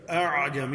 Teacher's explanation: لیکن اس طرح ذرا نرم کر دیا جائے گا۔ اعجمی، یعنی پہلی حمزہ واضح ہے اور دوسری حمزہ کو معمولی سا الف کی طرح ادا کرتے ہی عین کو ادا کر دیں گے ۔ تو گویا آواز میں ڈائریکٹ عین کے ساتھ ملانے کی